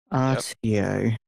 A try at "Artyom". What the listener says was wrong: So there's an M at the end. Artyom.